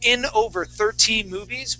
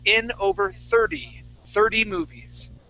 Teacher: So it's spelled with a T at the end, but in most cases when we have a TY ending, okay, that T is then going to turn into a D sound.